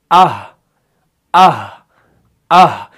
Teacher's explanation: जहां पर आप आखिर पे रुक रहे हैं वहां पर हा की अदायगी है, यानी हलक के निचले वाले हिस्से से जो है हा अदा हो रहा है